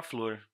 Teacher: o som do F e do L se juntam